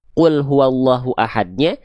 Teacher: jangan sampai kul, jangan sampai keluar ada percikan nafas. Kalau dibaca pakai huruf qof, qul artinya katakanlah.